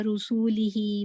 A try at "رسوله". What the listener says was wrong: رسول رکیں، یہ رسول ہی نہیں ہے، یہ رسول ہی ہے. ٹھیک ہے، مد اصلی نہ یہ ایڈ کریں، واو نہ ایڈ کریں. رسول ہی نہیں پڑھیں اس کو، رسول ہی پڑھیں.